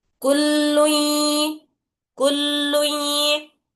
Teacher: تنوین کے اندر جو نون رہتا اس کو اب ملانا ہے یا میں ناقص طریقے سے، یعنی تھوڑی آواز نون کی باقی رہ جانا ، ویسے ملا کر اس کو پڑھنا رہتا نون کی آواز